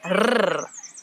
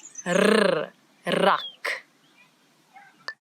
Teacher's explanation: it's the rrr, as if your tongue is jumping up and down in your mouth.